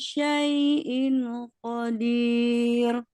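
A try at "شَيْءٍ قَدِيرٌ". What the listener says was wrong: Syai'in dengungnya agak kurang lama, Bu. Syai'in qadir.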